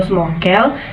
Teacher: gugus yang konsonan keduanya berupa konsonan nasal atau M atau n